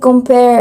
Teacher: the stress is on its second syllable which is the the pair.